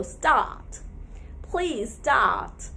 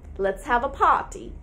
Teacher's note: we can remove the raw sound as per british pronunciation and we can fill the gap with a long vowel sound that's ah